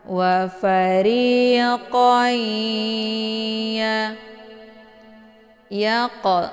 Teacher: tanwinnya dimasukkan ke dalam huruf ya dengan cara ditekan kemudian ditahan lebih kurang 2 harokat. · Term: idgham ma'al ghunnah